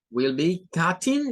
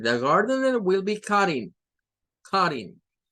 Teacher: Si lo hacemos con cutting, es con el sonido T. Si no, podríamos tomarlo como una flap T